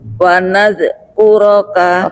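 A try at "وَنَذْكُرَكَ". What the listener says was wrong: Oke, masih mantul Ibu huruf zalnya. Wanadhkuro.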